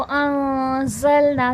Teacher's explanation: ज़ा हुर्फ़ सफ़ीर है, सख्ती सीटी के साथ पढ़ा जाएगा। ना में अलिफ मद्दा का क़ायदा, अलिफ से पहले ज़बर है, थोड़ा खींच के पढ़ा जाएगा। · नून साकिन में इख्फ़ा होगा यानी कि नून की आवाज़ छुपेगी। वो अंज़लना, ज़ा हुर्फ़ सफ़ीर है, सख्ती सीटी के साथ पढ़ा जाएगा।